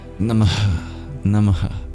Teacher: at the end of Namah, there is something called a visarga, an expulsion of breath.